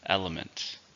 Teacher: 3, stresses on the first syllable.